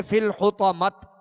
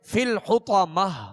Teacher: دو گول تا جو ہے، گول تا کو وقف میں ہائے ساکنہ سے بدلیں گے